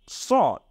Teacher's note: সিন হলো চিকুন আর সদ হলো মোটা